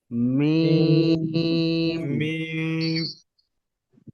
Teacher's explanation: বন্ধ করতে হবে ঠোঁটকে একটু চাপ দিতে হবে, বন্ধ তো করতে হবে, বন্ধ ছাড়া তো হবে না।